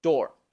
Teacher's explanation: tenemos una o larga que es como una O del español pero un poco más larga · esta d que ya les expliqué del inglés en donde la punta de la lengua no toca los dientes sino los alveolos